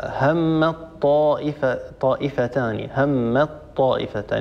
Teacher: لكن أحيانا يكون الحرفان الملتقيان متجانسين، مثلا همت طائفتان، هي أصلها همت طائفتان، تاء ساكنة وبعدها طاء متحركة والطاء والتاء من المخرج نفسه، إذن هما حرفان متجانسان.